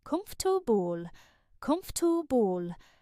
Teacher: This makes the word sound stiff and unnatural. In British English, the middle syllables are often reduced, making the word shorter and easier to say. The most common pronunciation is comfortable, with the second and third syllables blending together very quickly.